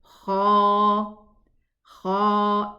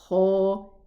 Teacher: It's pronounced from the nearest part of the throat towards the lips.